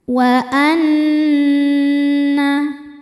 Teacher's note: Di sini ada hukum ghunah musyaddadah karena nun bertasydid. Cara bacanya berdengung. Tahan dengungannya kurang lebih dua harakat. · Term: gunnah musyaddadah